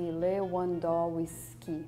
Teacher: the W doesn't sound like a V for us